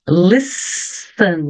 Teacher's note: Listen não pronuncio o t